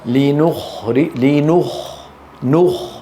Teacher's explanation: من النون المرققه الى الخاء المفخمه